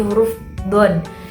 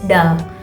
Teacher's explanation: Misalnya pada bunyi huruf don, itu terdengar lebih tebal dibanding pada huruf dal